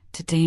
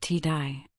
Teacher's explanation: In Australian accents, today might sound like t-ai.